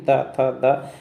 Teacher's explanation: जो वायु है दांतों से टकराती हुई जाएगी इसलिए इसको दंत बोलते हैं दंत वर्ण बोलते हैं उपा वर्ग · और ता वर्ग दांतों को टच करती है वायु, तभी यानी कि दांतों को टच करते हुए, जीभ देखना दांतों से टच होगी, ता था दा, तो जो वायु है दांतों से टकराती हुई जाएगी, इसलिए इसको दंत बोलते हैं, दंत वर्ण बोलते हैं